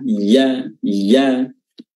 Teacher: Huruf yanya juga eh makhrajnya di tengah lidah ya diangkat ya ya ya dan dia berharakat fathah mulut dibuka di kembali